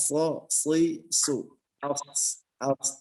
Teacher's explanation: Ya. Kemudian kenapa dia terdengar tebal? Karena terangkat pangkal lidah. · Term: huruf so